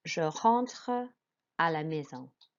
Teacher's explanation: Okay, and then maison, an AI is an A sound, an S makes like a Z sound, and en makes like an en sound, which is nasal